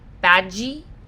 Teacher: bad is going to sound more like a J like badgy